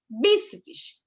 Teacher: Bi é a sílaba tônica, a sílaba mais forte.